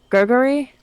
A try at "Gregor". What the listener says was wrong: Gregor, yeah. No, like Gregor, like Gregory, but without the Y.